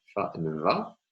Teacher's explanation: labiodentals, in which the lower lip touches the bottom part of the lower teeth